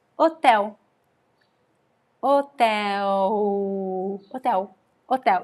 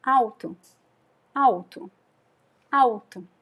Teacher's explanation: you don't pronounce the L at the end of syllables in Portuguese. In Brazil, we just don't.